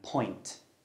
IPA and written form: pɔɪnt (point)